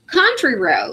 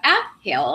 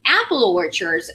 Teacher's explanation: the stress falls in the second syllable but in an English the stress generally falls in the first element of the compound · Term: noun compounds